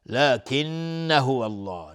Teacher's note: نون مشدد دو حرکت غنه میدیم. هو الله لفظ جلاله مفخم است چون قبلش فتحه اومده.